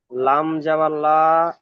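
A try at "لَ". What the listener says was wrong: লাম জাবার লা। কোনো টান হবে না। হারাকাত। লাম জাবার লা।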